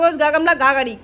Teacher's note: घ है जो कंठ में आता है